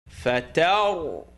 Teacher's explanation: When ra has sukun, you look at the letter before it, it's got a line on the top. So the line on the top is going to be pronounced ta, and the ra is going to be pronounced heavy.